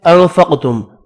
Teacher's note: انفقتم نون کا اخفا ہوگا. قاف ساکن ہے قلقلہ کریں گے اور حروف مستعلیہ ہے پر بھی پڑھا جائے گا